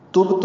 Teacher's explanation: تبت میں با ساکن پہ قلقلہ ہے